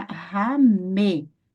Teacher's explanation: Então, aqui você lerá ramê. Esse shivá vai ter o som de um pequeno e.